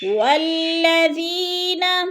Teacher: رَزَقْنَاهُمْ يُنْفِقُونَ، وَالَّذِينَ يُؤْمِنُونَ، وَالَّذِينَ يُؤْمِنُونَ، والذی پہ جو ہے یا مدہ ہے، یا ساکن سے پہلے دال کے نیچے زیر ہے تو یا مدہ، اس کو تھوڑا سا ہم نے لمبا کر کے پڑھنا ہے · یو حمزہ ساکنہ ہے، اس کو جھٹکا دے کے پڑھنا ہے